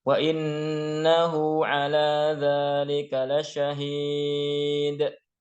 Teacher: Karena berhenti maka harus ada pantulan dari huruf dal, ya dikolkolahkan.